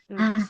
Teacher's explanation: Nah, ha kayak ha ngomong bisik-bisik.